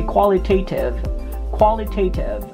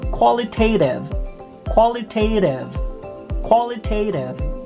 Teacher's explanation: you can pop the t or you can roll it